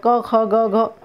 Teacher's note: तो गले से निकल रहे, कंठ से निकल रहे हैं, इसलिए ये कंठ हैं।